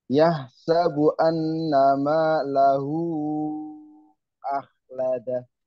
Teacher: Punya itu mad sila tawilah. Malahu punya itu dibaca lima harokat ya.